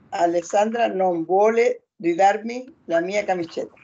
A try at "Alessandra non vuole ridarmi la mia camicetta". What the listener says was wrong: Ecco.